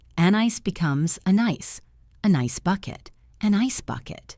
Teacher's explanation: Because of linking, the N sound moves.